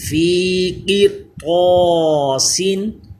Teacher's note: را بھی پر ہوگا کیونکہ طا حروف مستعلیہ اسی کلمے میں آ گیا